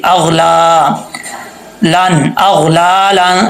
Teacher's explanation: اغ، غین کو پر پڑھیں گے، یہ حروف مستعلیہ میں سے ہے. اغ، لام کے اوپر کھڑا زبر ہے، اس کو لمبا کریں گے